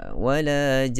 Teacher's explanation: sama saja suara kita, tidak ada tinggi. Tidak perlu kita angkat suara walajan.